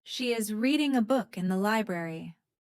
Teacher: The stressed words are reading, book, library.